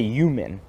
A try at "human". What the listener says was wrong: will never pronounce an H at the beginning of a word.